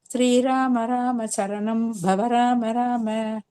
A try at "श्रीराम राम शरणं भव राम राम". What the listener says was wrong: Only அந்த fourth அந்த ரகு நந்தன அந்த மாதிரி பரத் அந்த ஃபோர்த் ப அந்த ஃபோர்த் எங்கெல்லாம் வருதோ அங்கெல்லாம் மட்டும் இன்னும் கொஞ்சம் ஸ்ட்ரெஸ் பண்ணி சொன்னேன்னா கரெக்டா. ஸ்ரீராம ராம சரணம்.